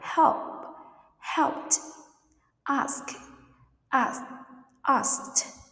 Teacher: Ending sound t. When we use it, after unvoiced sounds like p, k, s, or sh